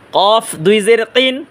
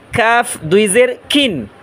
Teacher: এ কফ উচ্চারণ করব আমরা মোটা আওয়াজে, আর কাফ উচ্চারণ করব চিকন আওয়াজে।